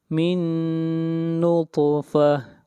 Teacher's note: طا کو موٹا پڑھیں گے، طا کے اوپر قلقلہ کریں گے